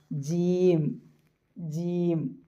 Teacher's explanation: ജീം ആണെങ്കിൽ മഹ്റജ് point touch ചെയ്യും നാവിന്റെ നടുഭാഗം മേലെ അണ്ണാക്കിന്റെ ല്ലേ എല്ലുള്ള അണ്ണാക്കിന്റെ ഹാർഡ് പാലറ്റിന്റെ സെന്ററിൽ തൊടും ടച്ച് ചെയ്യുമ്പോഴാണ് എന്തുണ്ടാവുക ജീം